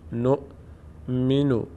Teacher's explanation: واو اینجا تلفظ نمیشه حمزه تلفظ میشه